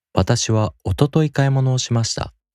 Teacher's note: In this sentence, おととい is used as an adverb, so there’s no accent on this word.